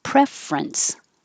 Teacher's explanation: we don't say the middle syllable